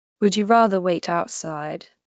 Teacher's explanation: would you blends into a single sound, something like would ya.